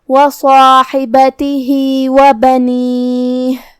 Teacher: حرف الحا کی ادائیگی حلق کے درمیان والے حصے سے ہے تو ہم ہا کو وہیں سے پڑھیں گے، جو کہ اس کے نیچے زیر ہے تو اس کا دھیان رہے.